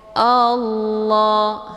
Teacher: hamzahnya dileburkan ke dalam huruf la dengan cara ditekan dan bacaannya tebal. Kemudian la dibaca panjang 2 harokah. · Kemudian Allah, di sini ada lafdzul jalalah, namanya lafdzul jalalah tafkhimun mufakkamun, yaitu lafadz Allah yang mesti dibaca tebal karena sebelum lafadz Allah berharokat fathah yaitu a. Jadi bacanya Allah, hamzahnya dileburkan ke dalam huruf la dengan cara ditekan dan bacaannya tebal.